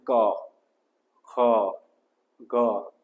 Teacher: જીભના પાછળનો ભાગ અને ગળાના ઉપરનો એટલે કે કંઠ. જીભના પાછળનો અને ગળાના ઉપરનો એને કહેવાય કંઠ. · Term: કંઠ્ય